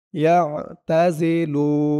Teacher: আইনের উচ্চারণটা কিন্তু গলার ভিতর থেকে শক্ত হয়ে বের হবে